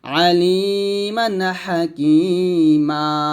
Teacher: একটা জবর বাদ দিব মনে মনে আরেকটা জবর রেখে এক পরিমাণ টেনে পড়বো